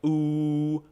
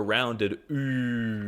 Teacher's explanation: The normal U is pronounced like ooh, while the U with the dots is more of a rounded ooh.